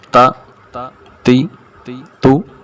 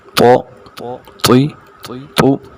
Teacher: تا یہ باریک پڑھی جائے گی، تو کو موٹا پڑھیں گے